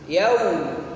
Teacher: Yaum monyong karena waw itu huruf bibir, jadi dimonyongkan